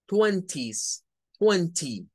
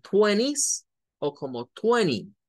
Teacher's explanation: la pronunciación norteamericana quita el sonido de la T